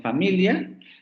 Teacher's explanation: Luego serían las fricativas, que tendríamos la fricativa labiodental sorda, como en familia